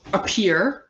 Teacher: the ah is a reduced vowel it becomes a schwa